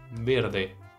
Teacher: eu não posso transformar essa letra e que tá aí no final em i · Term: som fechado